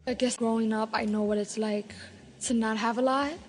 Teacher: New York Latino English speakers have a particularly light L